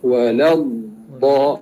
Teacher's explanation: Huruf dad keluar tepi lidah, sama ada kanan atau kiri. Hafatul lisan.